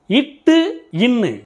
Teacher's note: நாவின் நுனி அன்னத்தின் நுனியில் பிறக்கின்றது